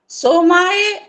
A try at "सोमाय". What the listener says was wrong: हाँ देखा, ये पकड़ा ना मैंने, सोमाय नहीं है, सोमाय हाँ, मात्रा नहीं लगानी है, गलत है, हाँ नहीं लगाने।